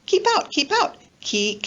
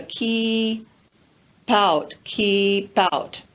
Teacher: linking the final consonant sound of keep with the next word which begins with a vowel sound, o or ow. So we have the linking of the keep out, keep out.